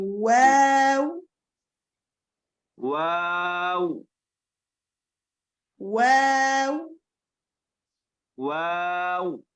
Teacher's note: ابھی واو میں ہونٹوں کو ہم مکمل گول کریں گے